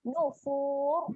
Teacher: Keadaannya adalah ra yang tebal. Muncunglah sampai habis tu kita matikan ra tu dengan keadaan muncung.